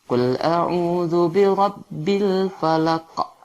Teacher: Falaq itu adalah hukumnya qalqalah. Bacaan qa itu dipantulkan.